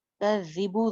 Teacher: ज़ाल अगेन बगैर सीटी के पढ़ना है और हरकत लंबी नहीं करनी, ना ज़ाल की ज़ेर ना बा की पेश।